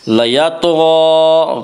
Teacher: غین کو پر پڑھیں گے، غین حروف مستعلیہ میں سے ہے۔